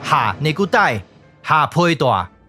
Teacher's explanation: 根据变调规则，第7调要变第3调 ，第3调对应的也就是把这个声调，所以这个字就要读作哈内古代、哈配大、哈▁A▁大啊。今日我就讲到这，感谢你的收看，欢迎批评和指教，谢谢，拜拜。